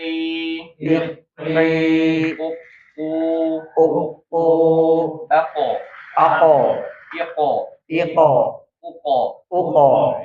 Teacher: Q ini sudah dipangkal lidah makrotnya ya. Jadi ditempelkan ke langit langit ya. Naikkan ke langit langit O ya. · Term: qof